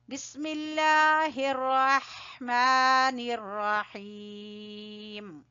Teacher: را کو پر پڑھ لیجئے گا، لفظ اللہ کو باریک پڑھیں گے، بسم اللہ اور ہا کو وسط حلق سے